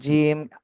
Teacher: জিহ্বার মাঝখান উপরে তালের সাথে লাগে